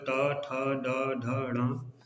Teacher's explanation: मूर्धन्य व्यंजन जिनका उच्चारण करते समय जीभ ऊपर की तरफ जाती है और मुंह के अगले हिस्से को स्पर्श करती है, उसको हम मूर्धन्य बोलते हैं।